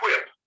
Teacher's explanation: sometimes they'll take that WH and they actually pronounce it as HW